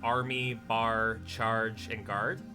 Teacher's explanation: Canadians have a tendency to raise their tongues with the a in a like Army bar charge and guard whereas in the American dialect it it's supposedly a flatter tongue